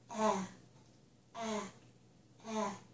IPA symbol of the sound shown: æ